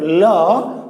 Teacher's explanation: জিহ্বা যেহেতু বাধা দিচ্ছে সামনে দিয়ে, তো বাতাসটা এই 2 পাশ দিয়ে বের হয়। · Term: পার্শ্বিক বর্ণ